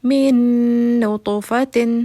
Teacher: نون، ٹھیک ہے۔ یرملون میں سے نون آ گیا نا تو پہلا والا نون دوسرے والے نون میں مرج ہو جائے گا اور یہ تشدید میں تبدیل ہو جائے گا ، یعنی کہ یہ اس میں مکس ہو کے تھوڑا سا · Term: ادغام